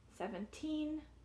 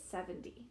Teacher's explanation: the sound in the teen should be a t pure t the sound in the ten should be a d like dog